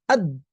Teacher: Ketika kita ucapkan dal misalnya ad, maka tertutuplah ee laju udara. tidak bisa melaju lagi. Aliran udara sudah tidak bisa lewat lagi.